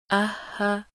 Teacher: हा की अदायगी हलक के नीचे वाले हिस्से से